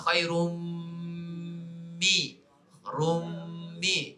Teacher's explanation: Kemudian yang keempat dengung idgham al-ghunnah